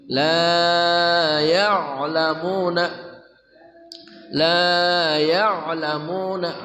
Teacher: ain dari tengah kerongkongan